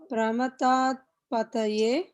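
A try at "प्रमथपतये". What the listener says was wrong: Why Pramata? It is Dirgha. What is this letter? It is Ta.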